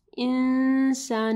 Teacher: نون ساکن کے بعد سین ہے، اخفا غنہ ہوگا یہاں پہ